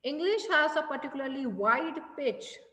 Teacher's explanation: See, मैंने जब ये सेंटेंस बोला English has a particularly wide pitch, मैंने wide पे stress दिया. I modulated myself.